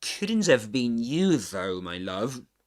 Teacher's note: You you is stressed here is emphasized because this is contrastive focus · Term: contrastive stress